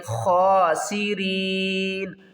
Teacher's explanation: سین کے اوپر سیٹی کی آواز آئے گی ، خاسرین، وقف کی صورت میں نون کو ساکن کریں گے